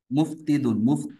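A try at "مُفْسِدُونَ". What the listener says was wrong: না সিন সিন, মুফসি।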